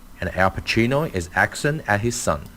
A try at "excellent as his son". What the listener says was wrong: But see, now here it says at his son. It's as, not at. And it's not accent, it's excellent. Excellent as his son. As his son. Excellent as his son.